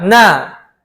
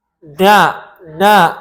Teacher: gunah anqaso atau gunah yang paling kurang itu ada pada Nun dan mim berharakat baik fathah dah ataupun kasrah ini tetap mengandung gunah kita membaca